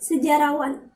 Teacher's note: Juga di dalam proses pengimbuhan akhiran pada dasar sejarah, maka fonem H pada dasar sejarah itu dilesapkan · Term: pelesapan fonem